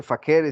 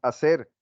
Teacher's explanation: llegó al español y se perdió la F. Ya no se dice facere, sino es hacer. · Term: aspiración de la F